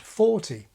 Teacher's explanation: Occasionally the King uses American-style t-voicing, as here in the word 'forty'